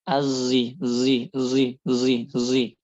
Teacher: Kemudian selanjutnya musam yang bercampur dengan suara zah yaitu dia suara z katanya wahi yukha yang bercampur suaranya dengan suara zai. Jadi dia enggak murni shad, tapi dia shad bercampur dengan suara zai walaupun dominannya masih tetap shad bukan zai.